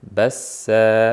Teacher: Bassa bir alif, ya'ni ikki harakat cho'zib qo'yamiz.